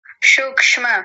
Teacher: स होता है ना ये सांप वाला स तो सूक्ष्म दंतीय सकार